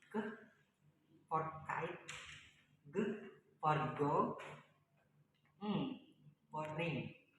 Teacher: The next is velar, base of tongue and soft plate. The base of the tongue touches the back of the soft plate. The resulting sound is k for kite, g for go, for ring.